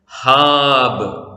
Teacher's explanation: അന്ത്യാക്ഷരം ബേത്ത്. അന്ത്യാക്ഷരത്തിന് സ്വരമില്ലാത്തത് കൊണ്ട് അതിന്റെ തൊട്ടുമുമ്പിലെ അക്ഷരത്തിന്റെ സ്വരം ദീർഘമായി ഉച്ചരിക്കുന്നു.